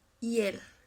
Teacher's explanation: Lo ideal serían 2 sílabas, pero quedaría reducida en una sola.